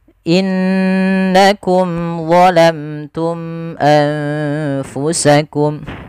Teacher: nun sukun bertemu dengan huruf fa, yang dimana nunnya disamarkan ke huruf fa. Nunnya disamarkan ke huruf fa, jangan diganti. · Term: ikhfa